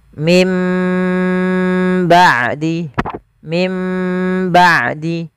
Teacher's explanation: kita mengambil yang idbaak saja tidak dengan furjah yaitu bibir kita rapat